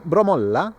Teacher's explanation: the last syllable is sometimes extended and more powerful